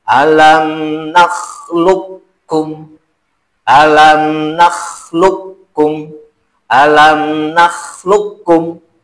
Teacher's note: menghilangkan sifat qalqalah dan isti'la dari huruf qaf dinamakan idgham mutaqaribain shogir kamil · Nah, ini mah karena si qaf ini, huruf qaf ini ke depannya ketemu huruf kaf. Jadi tidak diqalqalahkan, tidak dipantulkan. Karena nama juga idgham mutaqaribain.